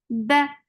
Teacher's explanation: Ba is very sharp sound, no flow of sound at all.